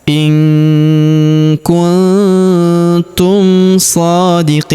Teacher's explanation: Huruf Qi kita panjangkan 2, 4 atau 6 harokat karena di depan huruf Qi terdapat ia sukun sebelum huruf pemberhentian, dan huruf pemberhentian huruf Na kita sukunkan atau kita matikan.